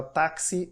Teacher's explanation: o X tem dois fonemas consonantais, como se fosse um K e um S